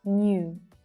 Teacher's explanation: Can you see that extra /j/ there that's included in the word 'New'?